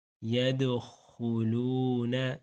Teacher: يَدْخُلُونَ، يَدْخُلُونَ، دال کا کلکلا کریں گے، دال حروف کلکلا میں سے ہے اور یہاں پہ ساکن ہو رہا ہے، اس لیے کلکلا کریں گے۔